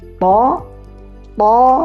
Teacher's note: to, to itu tidak ada angin yang keluar. Bisa dicek tangannya di depan mulutnya.